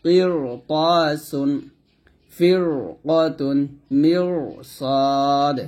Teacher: তাহলে র টাকে মোটা করে পড়তে হবে র সেকেন্ডে জের থাকলেও কিন্তু সেক্ষেত্রে র টা মোটা হবে